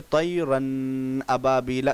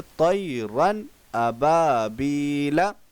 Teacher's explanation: नून को ज़ाहिर करके बग़ैर गुन्ना के जल्द पढ़ेंगे, इसको इजहार कहते हैं।